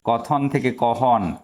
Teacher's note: মহাপ্রাণ ধ্বনিটা হ আকারে পরিণত হয়েছে।